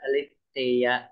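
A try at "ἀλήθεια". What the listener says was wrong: Kasi yung accent mo, doon mo itataas yung boses. Pero yung Aletheia. Article niya, Eta, pero mayroon siyang rough breathing. So, lagyan mo ng sound na H.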